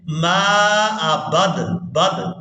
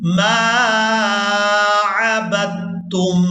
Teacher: وَلَا أَنَا وَلَا أَنَا عَابِدٌ مَا عَبَدتُّمْ، اب یہاں پر ہم نے با کو تا مشدد کے ساتھ ملانا ہے، دال ساکن کو یہاں پر چھوڑ دیں گے